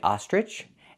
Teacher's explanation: some people say ostrich, using the j sound like in juice and jump.